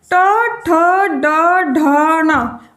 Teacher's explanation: तालु का आगे वाला भाग मूर्धा। तो ट वर्ग की ध्वनि निकलती है मूर्धन्य से या मूर्धा से